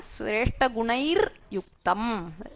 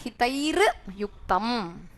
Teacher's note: Visarga is replaced by ir, the repha.